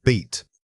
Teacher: It requires a conscious effort to lengthen that single vowel sound.